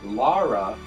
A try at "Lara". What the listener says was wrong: It's not Laura. It's Lara.